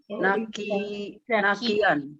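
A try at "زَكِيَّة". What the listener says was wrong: Itu huruf zal bukan nun. Jaki.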